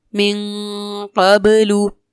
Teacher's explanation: اس مثال میں اخفا بھی ہو رہا ہے اور ساتھ ہی ساتھ با میں کلکلا بھی کریں گے کیونکہ با حروف کلکلا میں سے ہے اور ساکن ہے.